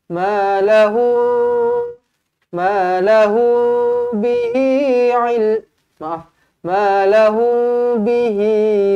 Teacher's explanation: Ma lahu bihi, ma lahu, dengungkan dua harakat di sini. Mim kosong bertemu dengan ba, didengungkan dua harakat.